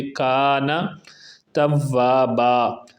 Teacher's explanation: ہا الٹا پیش ہو ہے، ایک الف کی مقدار کے برابر اس کو لمبا کر کے پڑھیں گے۔ کانا، الف کی وجہ سے ایک الف کی مقدار کے برابر کا کو بھی لمبا کریں گے